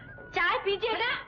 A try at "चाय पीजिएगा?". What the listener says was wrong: अरे काटती क्यों है? प्यार से कहना चाय पीजिएगा?